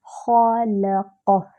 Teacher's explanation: خا جو ہے وہ موٹا حرف ہے، اور خا جو ہے وہ ادنیٰ الحلق سے ادا ہوتا ہے۔ ادنیٰ یعنی قریب، منہ سے قریب کا حصہ۔